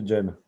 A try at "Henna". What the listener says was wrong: Henna, please. Henna, like with an H, man.